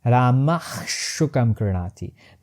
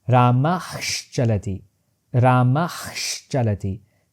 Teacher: Visarga gets palatalized, and it transforms into half sha.